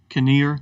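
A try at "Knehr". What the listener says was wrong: Isn't it Nur? Nur. Usually the K is normally the K is silent in something like that.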